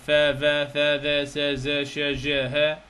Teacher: احنا عندنا الفريجاتيفز اللي هي الأصوات الاحتكاكية، مجموعة من الأصوات التي يكون هنالك فيها احتكاك عند خروجها